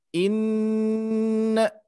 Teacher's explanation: Nun bertasydid harus ditahan lebih lama